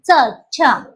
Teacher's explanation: आता च म्हणताना कुठे लागते कठोर तालूला च दोन्ही तालू एकत्र घ्यायचा तालव्य मध्ये म्हणजे ज्या वर्णांचा उच्चार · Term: तालव्य वर्ण